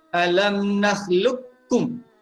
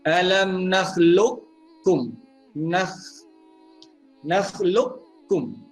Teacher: Idgham kamil ni maksudnya kita masukkan huruf qaf itu ke dalam huruf kaf secara sempurna.